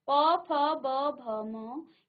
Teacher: प, फ, ब, भ, म ये आपका आपके होठों को स्पर्श करते हुए आप इसकी ध्वनि उच्चारण हो रहा है।